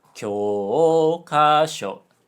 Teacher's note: So, 教科書, textbook, low, high, high, low.